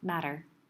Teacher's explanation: Matter with the t sound that we pronounce usually as d